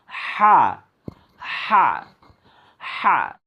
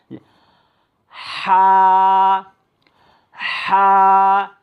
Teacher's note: আপনারা খুব লক্ষ্য করবেন যে এই হাটার উচ্চারণ হবে এটা হলকের মধ্যখান থেকে উচ্চারিত হবে, মানে গলাটাকে একটু চাপ দিতে হবে হলকের মধ্যখান থেকে।